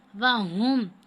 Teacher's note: ہا کو موٹا کر کے پڑھنا ہے